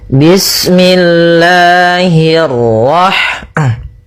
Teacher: Kita ulangi, nah di sini pada lafal Allah, Allah itu ada mad thabi'i pada lafal la-nya. Nah, di sini kita panjangkan dua harakat. Bismillahirrahrah Kemudian hi-nya tipis, kasrah bertemu ra yang tebal.